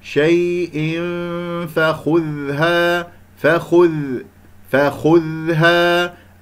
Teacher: أسمع صوت الذال كيف يجري فيها الصوت ومن غير قلقلة